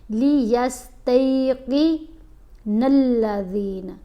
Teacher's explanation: تا کے اوپر زبر ہے, ساتھ یا ساکن ہے, تو یہ حرف لین ہے, تی آواز بنے گی